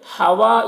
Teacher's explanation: ہوا یہاں پر دیکھیے الف مدہ ہے، اسے ایک الف کے برابر کھینچیں گے، را کو باریک پڑھیں گے، اور یا میں کھڑا زیر ہے، یہ یا مدہ کی طرح ہوتا ہے، اسے ایک الف کے برابر کھینچیں گے۔